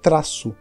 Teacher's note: Os galegos vão falar traço, mesmo estando com esse Z, porque eles não têm essa pronúncia como nós fazemos.